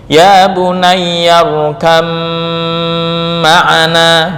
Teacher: Nah, irkab ma'ana itu dalam tajwid Hafs menyalahi aturan karena ba dan mim satu makhraj, yaitu di bibir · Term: idgham mutajanisain